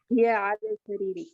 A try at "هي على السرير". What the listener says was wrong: نہیں، جب تشدید آتی ہے نا تو پھر الف لام نہیں پڑھا جاتا. شمسی ہوتا ہے نا، تو علی السریر. علی السریر.